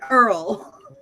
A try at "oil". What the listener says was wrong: It's not Earl. It's oil. It's not turlet or however you said it.